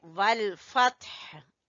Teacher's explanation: जब वक्फ करेंगे तो कहेंगे वल फत्ह, एंड पे हा की आवाज आए